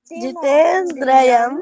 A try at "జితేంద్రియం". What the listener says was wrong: ద్రయం కాదు, జితేంద్రియం